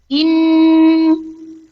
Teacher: Ketika dia bertasdid, suara dengung langsung menancap di pangkal khoisum. · Teman-teman harus langsung tarik ke belakang di pangkal khaisum. Karena ketika teman-teman tidak tarik ke belakang, dia akan bunyinya izhar. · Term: Guna akmal